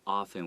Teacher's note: it has a T, but we often say often without the T sound. 这个 often 有时候发音的时候呢，就是有不一样的这个发音的方式。有的人会把虽然有一个 T 啦，但通常我们不把这个 T 念出来，所以会只有念 often 这样子。